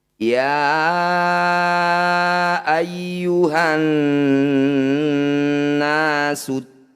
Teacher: Ya panjangkan 5 harokat atau 5 ketukan. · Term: mad jaiz munfasil